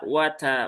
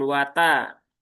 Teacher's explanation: t-nya di sini juga ada hames yang selalu mengikuti huruf tersebut. Nah, maka pastikan dia wat bukan wata.